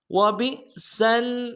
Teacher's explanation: جہنم عذاب جہنم وبئسل واو کو نرم سے ادا کریں گے، با کو حمزہ کے ساتھ ملانا ہے، حمزہ کے اوپر جزم ہے جھٹکا دیں گے ، سین کو آگے لام کے ساتھ ملائیں گے، وبئسل مصیر